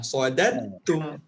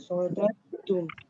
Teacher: dal yang kedua ni tak bunyi Sodat terus bunyi huruf ta. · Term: idgham